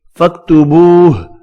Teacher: ادغام مع الغنہ ہوگا، میم مشدد پر غنہ کریں گے۔ فاکتبوہ، واو مدہ کو 1 الف کی مقدار میں کھینچ کر پڑھنا ہے، ہاں ساکن پڑھا جائے گا وف کی صورت میں۔